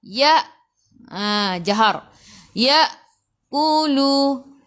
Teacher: hamzah baris sukun kena baca dengan putus. Tahan nafas.